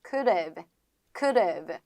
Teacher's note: could've 에서 D를 조금 더 리을로 바꿔가지고